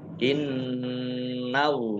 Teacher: nun tasdid dibaca gunnah atau mendengung. Innallaha Allahnya dibaca tebal karena harokat di depannya fathah.